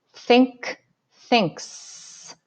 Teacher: In this word, the suffix s makes the s sound because the last word in the base word, k, is not voiced. So my throat isn't buzzing when I make the k sound.